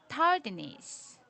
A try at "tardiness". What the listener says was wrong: Not tardiness. Make this ness, like short I, ness, tardiness.